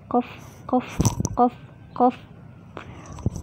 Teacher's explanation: pangkal lidah bertemu dengan langit-langit atas atau disebut aqsal lisani fauqo